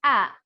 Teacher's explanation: ah is pronounced in the front of the mouth